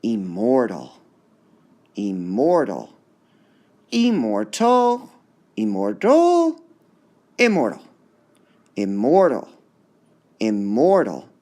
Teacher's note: so we have three syllables which part would be stressed immortal unstressed stressed unstressed